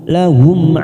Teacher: mim sukun Idhar Safawi kita baca jelas tanpa mendengung